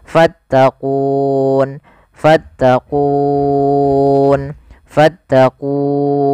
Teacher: ini alifnya tidak dianggap kemudianfal quun ada bacaan Mad aridukun yaitu Mad yang terjadi disebabkan karena adanya sukun Arid di akhir bacaan